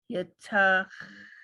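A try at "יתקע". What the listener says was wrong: Yitaka. Ka. It's a kuf. Yitaka.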